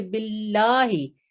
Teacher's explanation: बिल्लाही ये मुशद्दद है लाम, और इसको स्ट्रांगली पढ़ते हैं, मजबूती से पकड़ते हैं